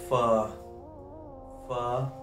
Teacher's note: ऊपर वाले अगले दो दांत है ये नीचे होंड है फा ऊपर वाले अगले दो दांत नीचे वाले होठ के दरमियान आ जाए